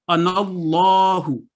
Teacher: لام جلالہ پور پڑھا جائے گا